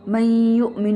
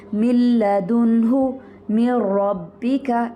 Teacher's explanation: لیکن من لدنہ، من ربک، یہاں پر ہم نون کو تو نہیں پڑھ رہے، نون کو را میں مدغم کر رہے ہیں، نون کو لام میں مدغم کر رہے ہیں، لیکن غنہ نہیں کر رہے یہاں پر. تو اس لیے یہ ادغام بغیر غنہ ہوگا.